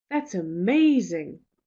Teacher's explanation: you can see the stress that I really put on amazing